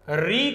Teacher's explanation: री का उच्चारण स्थान है मुर्धा